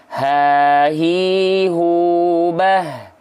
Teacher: kalau ha kecil yang harusnya dilafalkan dari tengah tenggorokan dia terlalu ke bawah maka yang muncul adalah huruf ha besar